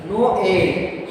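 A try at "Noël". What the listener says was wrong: No, you are taking too much break. No, and then directly pronounce.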